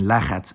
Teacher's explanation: with chet in the middle, both vowels become a